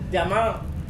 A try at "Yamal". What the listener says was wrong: Yamal ya, bukan Jamal ya.